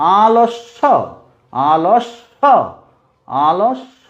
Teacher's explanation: শকে দুবার উচ্চারণ করছে, একবার অল্প প্রাণে, একবার বেশি প্রাণে, মহাপ্রাণ বায়ু এবং অল্প প্রাণ বায়ুতে।